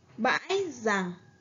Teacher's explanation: Ở tiếng dằng, các bạn lưu ý cho cô vần ăn. Có âm cuối là ng.